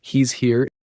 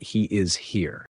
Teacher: Moving on to some auxiliaries, has, does, and is. These are really commonly reduced, often down to just z.